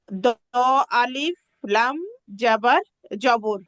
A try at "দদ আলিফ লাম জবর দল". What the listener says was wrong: হ্যাঁ আপু, দ আলিফ না, দদ, হরফটা কিন্তু দদ। দদ আলিফ লাম জবর দল।